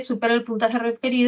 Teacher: esto es una orden, tiene tono descendente